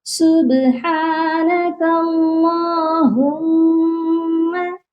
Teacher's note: میم مشدد، میم کے اوپر شد ہے، میم مشدد پر ہمیشہ غنہ کیا جاتا ہے۔